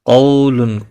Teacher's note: قاف مستعلیہ ہے، پر پڑھا جائے گا، واولین ہے، تھوڑا نرمی کے ساتھ کھینچ کر ادا کریں گے۔